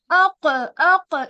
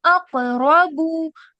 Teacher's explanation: अक अक इतना नहीं, हल्का सा कलकला करना है, बस इतना ज्यादा नहीं।